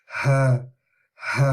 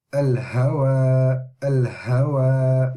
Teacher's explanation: it comes from a deeper part than English H. It comes from right at the bottom, close to the chest